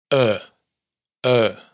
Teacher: Porque en el resto de sílabas átonas, la vocal se relaja un poco más, se difumina un poco más y se parece más a una vocal neutra. La vocal neutra es ese sonido vocálico indeterminado que está como a medio camino de todas las vocales